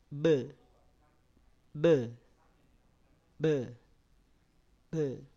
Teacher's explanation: Bukan be ditekan, tapi dia ada suara yang terputus. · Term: qalqalah